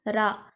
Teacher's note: நாவின் நுனி மேல் அன்னத்தின் மையப்பகுதியை உரசுவதால் தோன்றும் எழுத்து ரா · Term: வல்லின ரகரம்